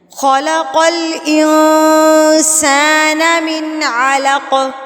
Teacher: قوف جو ہے وہ سکون کی حالت میں آ رہا ہے، اس وجہ سے یہاں پر ہم قلقلہ کریں گے۔ قلقلہ کا مطلب ہوتا ہے ہلا کر پڑھنا۔